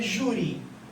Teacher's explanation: a sílaba tônica, vocês concordam que é a penúltima, é o ju